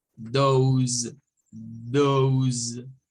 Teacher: Nótese acá que esta S tiene el sonido de una Z. El sonido Z, el sonido Z, vibrante.